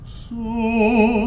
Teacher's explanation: the su wants to be under because it's a dark vowel, su, and it'll want to go to the back of the mouth. So you have to really consciously think of keeping that same placement that you found on the yi at the very beginning, even though the vowel is u.